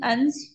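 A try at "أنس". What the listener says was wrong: अनसिन अनसिन अनसिन अनस नून पर जबर है। आमतौर पे लोग जो है ना अंस पढ़ते हैं इसको, ये अंस नहीं है अनस है।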